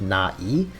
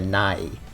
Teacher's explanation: she splits it up like na e, whereas instead like sort of rounds her vowels off into the next one like a nai